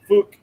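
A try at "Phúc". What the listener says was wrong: His name is Fook, but change the emphasis on the U.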